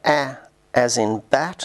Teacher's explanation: as in bat which is low front and unrounded